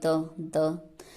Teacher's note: द बोला तो जीभ दांत से टच हुई, द मतलब दांत से।